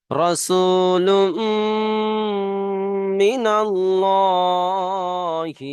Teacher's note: মিম মুশাদ্দাদ একালিপ পরিমাণ গুণনা করে পড়তে হয় তাই এখানে গুণনা হচ্ছে রাসূলুম মিনাল্লাহি